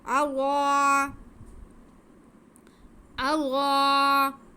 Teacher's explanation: کلما اغا، کلما اغا، حمزہ پہ زبر، آگے غاد پہ زبر ہے اور ساتھ میں الف ہے، تو یہ بھی الف مدہ ہو گیا۔ غاد کو ہم موٹا کر کے پڑھیں گے کیونکہ یہ حروف مستعلیہ بھی ہے